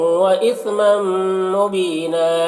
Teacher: नौ यहाँ पर इदगाम नाक़िस हो रहा है तो गुन्ना के साथ पढ़ेंगे